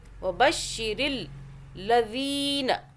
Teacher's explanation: دال کو کھینچ رہے ہیں، دال کے آگے یا مدہ ہو رہی ہے